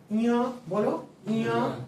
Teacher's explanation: ञ देखो नाक आ गया ना? नाक से लगता है। नाक से हम लोग बोल रहे हैं। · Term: नासिका